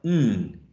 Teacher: the tongue and you touch the Ala Ridge right Ridge and it's nasal because part of the air flow goes through the nose or nasal cavity